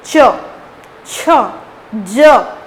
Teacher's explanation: च वर्ग के जितने भी वर्ण होते हैं वो तालु से निकलते हैं।